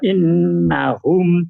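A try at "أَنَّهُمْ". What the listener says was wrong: Bukan in, patah itu.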